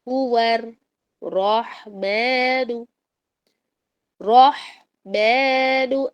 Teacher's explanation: ہو اور واو کا پھر را سے ملا دیں گے. تو واو را کو ملانے کے باوجود صرف اور صرف را ہی موٹا ہوگا، واو موٹا نہیں ہوگا